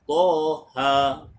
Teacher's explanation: 2 harakat pada huruf ta, 2 harakat pada huruf ha. Toha. Jangan panjang sangat.